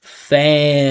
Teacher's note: Listen to how the vibration just continues through, never stops.